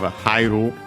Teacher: Hairu accented on the ha, because I becomes a diphthong in this case, so the accent moves, can stay on the second vowel part of a diphthong.